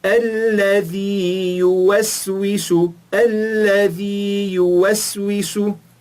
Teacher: Nós esticamos o primeiro Ya, depois falamos o outro.